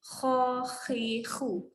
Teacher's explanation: Kalau dia lembut dia jadi huruf ha. Tu tak boleh jadi lembut. Huruf kha ni kena keras di kerongkong. Khahihu. Lagi sekali sebut.